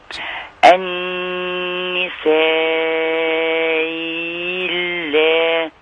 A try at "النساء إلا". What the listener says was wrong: تمام، بس زادت منك يعني ايه؟ انت عملت الاثنين مع بعض وانت خارجة من الإبدال. دخلتي على التسهيل وبعدين نمد سته بقى، لان احنا عندنا هنا ايه؟ التقى بايه؟ بساكن اللي هي اللام.